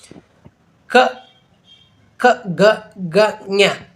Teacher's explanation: ಇವುಗಳು ಕಂಠದಲ್ಲಿ ಹುಟ್ಟುತ್ತಾ ಹುಟ್ಟುವಂತಹ ಅಕ್ಷರಗಳಾಗಿರುವುದರಿಂದ ಇವುಗಳಿಗೆ ಕಂಠಾಕ್ಷರಗಳು ಅಂತೇಳಿ. ಇವು ಪ್ರಮುಖವಾಗಿ ನಮ್ಮ ಕಂಠದಲ್ಲಿ ಆಗ್ತಕ್ಕಂಥ ಅಕ್ಷರಗಳಾಗಿವೆ.